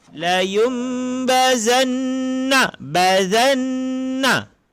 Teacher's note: Yakni iklab menukar bunyi nun kepada bunyi mim beserta dengung.